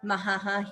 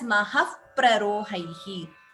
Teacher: Upadhmaniya. So visarga followed by pa, we get upadhmaniya.